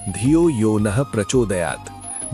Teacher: प्रचोदयात् में अंतिम अक्षर पर जोर।